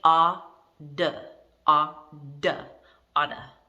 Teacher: So we pronounce it with a D if it's American English